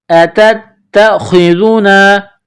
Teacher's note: تا کو تا کے ساتھ پلس کرنا ہے، تا میں سختی کرنی ہے ، خا کو موٹا پڑھنا ہے، ذال کو نرم پڑھنا ہے،